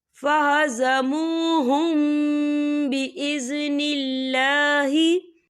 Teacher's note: یہاں میم ساکن ہے اور میم ساکن کے بعد جو ہے با آ رہا ہے، تو یہاں پر اخفا شفوی ہو رہا ہے، تو ہم یہاں غنہ بھی کریں گے